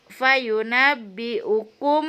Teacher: ikhfa safawi, ada mim mati bertemu dengan huruf ba